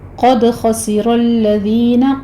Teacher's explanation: قاف کو پر پڑھیں گے، دال کے اوپر قلقلہ ہوگا۔ خسر الذین میں خا پر ہے، را پر ہے، لیکن الذین کا لام آپ نے باریک رکھنا ہے، اس کو آپ نے موٹا نہیں کرنا، ٹھیک ہے۔